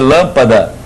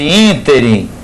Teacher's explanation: em que o acento tônico não caía nem na última nem na penúltima, caía na antepenúltima sílaba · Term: proparoxítonos